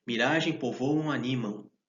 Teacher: Essa terminação aí do M, do som nasalizado, também serve para dar cadência, melodia.